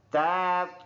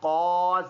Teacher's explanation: تا اور طا فرق کریں گے، یہ والا باریک ہے تا اور یہ ہے طا موٹا